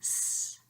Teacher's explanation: the S sound, alveolar, fricativa, and it goes s.